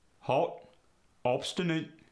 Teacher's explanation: short o goes to ah like hot and obstinate